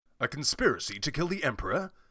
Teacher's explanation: From what I'm hearing, it's the P sound on emperor. It's called a plosive.